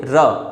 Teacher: आपकी जीभ जो है ऊपर मूर्धा से टकराकर उसे नीचे की ओर झटके से लाती है और वो लुढ़का देती है उस व्यंजन को, इसलिए उसे हम लुंठित व्यंजन कहते हैं।